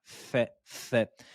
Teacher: La lettre fa, prenez les incisives supérieures et faites-la toucher avec les lèvres inférieures.